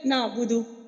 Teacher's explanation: نعبدو جلدی سے پڑھ دیا، واو مدہ آپ نے ادا نہیں کی، تو وہ بھی لحن جلی میں آئے گا، آپ نے ایک حرف کو کم کر دیا۔